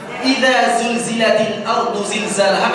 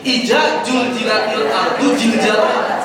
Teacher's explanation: Ya, dal, zal, zai, dha, qad, bahkan sampai jim kadang-kadang semuanya jadi sama.